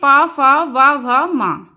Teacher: और ना फिर आता है होट ओट यानी दोनों होटों से दोनों होट जब आपस में मिलते हैं तो ये वर्ण उच्चारित होते हैं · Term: ओष्ठ